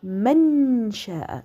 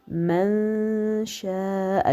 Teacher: le noun va être caché. Je ne le prononce pas, mais je viens avec la nasillement.